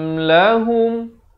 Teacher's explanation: Mim mati yang ada tanda sukun ini hukumnya izhar syafawi. Cara bacanya cuma jelaskan saja bunyi mim mati, jangan dipanjangkan.